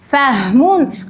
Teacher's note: Birinchi so'zimizda demak aynan halqumning tubidan chiqayotgan hafimiz bor ekan.